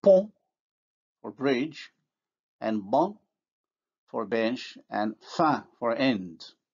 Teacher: we can see how the vowel is nasalized because it is in word final position, in other words, followed by nasal. You can see the nasal in the French spelling.